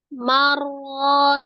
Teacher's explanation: Ditasdidkan ke huruf ro, tapi tidak disertai dengan gunnah.